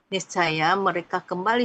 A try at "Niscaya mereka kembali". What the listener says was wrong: Intonasinya diperbaiki.